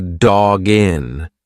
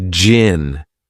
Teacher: You've put the G in front of the next word. It's one sound.